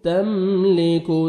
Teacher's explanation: ता को बारीक पढ़ेंगे, मीम साकिन का इज़हार है, जल्दी पढ़ेंगे